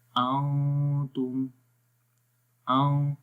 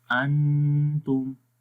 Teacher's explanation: Like نون کی آواز کو ہائڈ کرتے ہیں، چھپا کر پڑھتے ہیں، اور غنّے میں کلیئر تو پڑھیں گے، لیکن سٹل آواز ناک میں رہے گی. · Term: اخفا